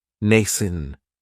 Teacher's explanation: It has the long A sound, nascent. That second syllable has that schwa, nascent. If something is nascent, then that just means it's beginning to exist or beginning to develop.